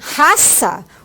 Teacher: Já em raça, o ar ele passa livre. Então, não vai vibrar, vai passar livre pelas pregas vocais.